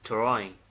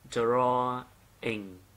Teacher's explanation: Nhưng mà đọc chuẩn thì nó sẽ là drawing, ok, drawing. Tức là nhấn vào âm thứ nhất